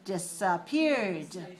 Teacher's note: And the past tense disappeared, also 3 syllables. We add the d, but we don't add another syllable.